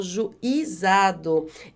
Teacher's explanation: Esse acento circunflexo está errado, porque a sílaba mais forte não é esse I de juizado. Olha só, a sílaba mais forte é o zá. Por isso, esse acento não deve existir aí.